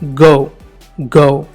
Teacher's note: Next దీని brother, ఇది ఒక వీలార్ కాన్సనెంట్, అంటే సాఫ్ట్ ప్యాలెట్ సాఫ్ట్ ప్యాలెట్కి మన టంగ్ వెళ్ళి వెనకాల back part of our tongue అది వెళ్ళి టచ్ అవుతుంది. ఒక ప్లోసివ్ అంటే పూర్తిగా గాలిని బ్లాక్ చేసి ఒకసారి రిలీజ్ చేస్తాం.